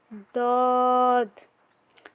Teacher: এরপরে দটাও কিন্তু এটা মোটা উচ্চারণ করতে হবে দত। জিহ্বার কিনারা উপরের মাড়ির দাঁতের সাথে লাগিয়ে এটা পড়তে হবে